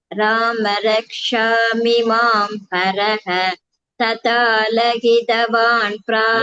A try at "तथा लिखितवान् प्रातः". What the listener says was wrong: लहितवान् இல்ல, तथा लिखितवान् प्रातः.